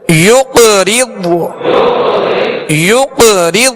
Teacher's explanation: قاف پر قلقلہ کریں گے اور ضاد پر قلقلہ نہیں کریں گے